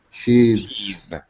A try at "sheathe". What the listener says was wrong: Voiced. As opposed to sheath. Just air. Sheath. It's voiced.